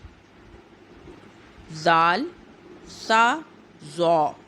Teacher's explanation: زبان کی نوک جب اوپر والے 2 دانتوں کے سرے سے لگے اس سے زال سا زو ادا ہوتے ہیں